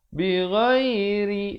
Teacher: ri di sini menjadi nipis